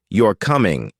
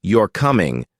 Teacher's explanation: with a falling tone, it's a statement